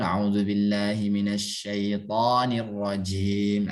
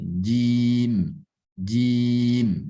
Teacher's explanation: Ini keliru. Tidak boleh dibanyakin angin yang keluar. Karena hurufnya memiliki sifat jahar. Suaranya yang harus dibanyakin.